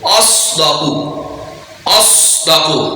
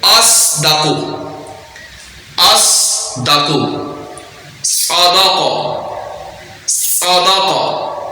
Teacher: صاد کو سیٹی کے ساتھ پڑھیں گے اور پر پڑھیں گے · صاد کی ادائیگی کا طریقہ ہوگا، اب اس کو پر پڑھیں گے اور سیٹی کے ساتھ پڑھیں گے